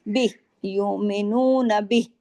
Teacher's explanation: با کے ساتھ ہاں کی آواز آپ کے گلے میں ضرور آنی چاہیے، ہاں کھڑی زیر ہم نہیں پڑھیں گے، جیسے کہ ہم نے پیچھے حق تلاوتہ کے اوپر ہم نے سکون کیا، اسی طرح بہ پہ اگر ہم عارضی سکون کریں گے تو کھڑی زیر بھی ہی ایسے نہیں پڑھیں گے۔